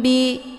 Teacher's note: Mim sukun bertemu dengan ba, ini dinamakan dengan ikhfa syafawi. Cara bacanya, mimnya ditekan kemudian ditahan lebih kurang 2 kali ketukan. Bi, jadi bunyi mim ini jadi agak samar-samar, ya.